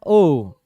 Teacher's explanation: केवल ओष्ठ नहीं रहता है, आ भी रहता है, तो कंठ से आएगा आवाज ओठ तक